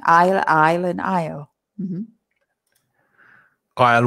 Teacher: another silent letter we do not pronounce the s the pronunciation of isle is exactly the same as the contraction